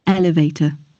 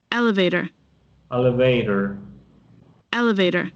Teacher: Normalmente la T para los americanos, como les decía, se convierte en una D. Es como un sonido de una D cuando está entre dos vocales.